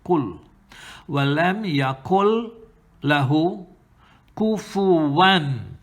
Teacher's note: Silence the nun because of this rule of idgham bighayri gunna, without gunna. So there's no nun, no khayshum sound.